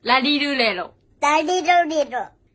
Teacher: Esse som mais suave, que começa a aparecer com um L, é o ponto médio entre R e L. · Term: R japonês